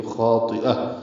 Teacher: کاذبۃ خاطئہ خا پر، اس کا الف مدہ بھی پر، طا بھی پر، حمزہ یا کی شکل میں ہے، تا مربوطہ سے ملا دیں گے، وقف کریں گے تو خاطئہ. حمزہ کو ہا سے ملائیں گے تو ہا ساکن پہ ہمس ہوگا، دونوں زیریں ختم ہو جائیں گی، تا ہا میں تبدیل ہو جائے گا.